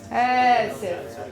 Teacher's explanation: don't begin with a glottal stop. Just go right into the vowel.